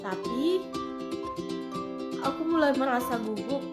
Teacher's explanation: menjawab kembali dengan nada turun dan juga ragu-ragu